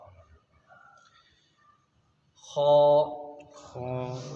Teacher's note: حلق کے اوپر والے حصے سے